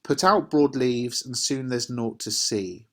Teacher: the words out, broad and leaves are all stressed. We put our stress, our intonation when we're reading them. · in this line the words out Broad and leaves are all stressed